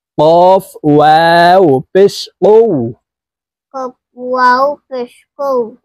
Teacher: কফ হরফ জিহ্বার গোড়া তার বরাবর উপরের তালুর সঙ্গে লাগাইয়া উচ্চারণ করতে হবে